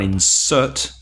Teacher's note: insert, stressed on the second syllable, is the verb